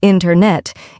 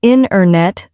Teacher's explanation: Instead, we say internet. The t sound gets softer or disappears. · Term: dropped sounds